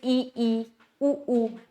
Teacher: संवृत स्वर जिसमें मुंह बहुत थोड़ा सा खुलता है। जैसे इ ई उ ऊ मतलब जो हमारा मुंह है वो बहुत ही थोड़ा खुलता है।